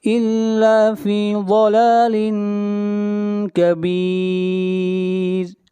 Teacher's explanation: ضاد حروف مستعلیہ میں سے ہے، ضاد کو موٹا پڑھا جائے گا